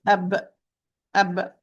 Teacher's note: the articulation point of the ba it's by sealing the lips or closing the lips